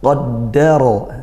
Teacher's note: Qaddara, dal tasydid ditekankan, qaddara. Kemudian ra-nya fathah maka tafkhim, bacanya tebal.